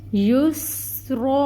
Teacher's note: پھر سین ہے، سین کی صفت واضح ہوگی سٹی کی، اور پھر رن ہے، را کے اوپر زبر تنوین، وقف ہو رہا ہے تو ہم اس کو الف مد میں تبدیل کریں گے اور اس کو 2 حرکت کے برابر لمبا کھینچیں گے۔ یسرا، اور را کو پر پڑھیں گے۔